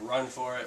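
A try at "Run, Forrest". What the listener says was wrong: You're saying what? What are you saying? You're saying for it. Well, you're pronouncing it wrong. There's an S in there. Forest. Like forehead.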